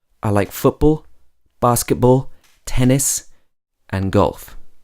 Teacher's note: on the first three my voice is going up in pitch and on the last one my voice is going down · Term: rising intonation